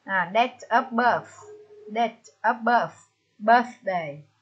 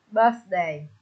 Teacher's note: Chúng ta lưu ý cách đọc âm thờ, cái lưỡi chúng ta đặt lên cái răng để phát âm răng thờ nhé